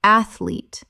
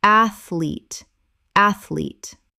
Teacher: Two syllables only. The middle syllable does not exist.